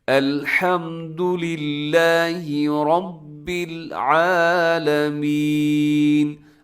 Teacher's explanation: آئین کا خیال رکھنا ہے خاص طور پہ، اکثر لوگ عالمین کر دیتے ہیں، یعنی آئین کی جگہ حمزہ ہو جاتا ہے